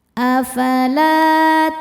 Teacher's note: Afala la hukumnya mad thobi'i zohiri. Karena ada alif sebelumnya fathah. Cara bacanya panjang dua harakat.